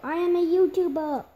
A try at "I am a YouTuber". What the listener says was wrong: You said I'm a YouTubed.